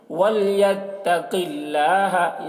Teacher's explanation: وَلْيَتَّقِ اللَّهَ، یہاں پر بھی قوف کو پر پڑھیں گے اور اللہ کلام کو باریک پڑھیں گے کیونکہ اللہ کلام سے پہلے زیر ہے